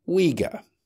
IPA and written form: ˈwiː.gə (Uighur)